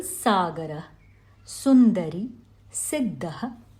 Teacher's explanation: for sa we move the tongue forward directing the air towards the teeth. Therefore, it is a dental, a dantavya aspirant sibilant.